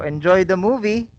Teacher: So notice how the intonation rises on movie.